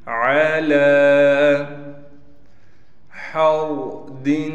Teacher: ہا کو صاف کر کے گلے سے نکالنا ہے، پھر ہا کو یہ را ساکن کے ساتھ ملا دیں گے۔